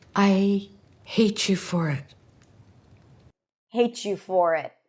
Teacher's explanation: We hear a ch sound like in chicken, but it's not a ch sound. It's the combination of a t and a y that lead to the pronunciation of a ch sound.